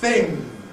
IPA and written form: θɪŋ (thing)